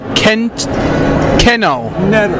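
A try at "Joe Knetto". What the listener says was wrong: No, it's K is silent.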